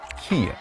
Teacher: In the South, the tongue is raised, making vowels higher, as in dress, dress, trap, trap. The vowel in kit is not only raised, but it becomes a diphthong, or two vowels back to back.